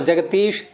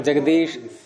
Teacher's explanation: एक गुंजन ध्वनि निकलती है, वर्गों के तीसरे अक्षर को बोलते समय एक नाद उत्पन्न होता है।